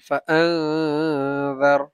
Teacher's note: নুন সাকিনের পরে জাল আসছে, ইখফা গুন্না, গুন্না করে পড়তে হবে, নুনটাকে গুন্না করে পড়তে হবে